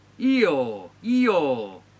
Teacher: In the first vowel 'I', your tongue is at the highest position, 'o' is at one of the lowest positions.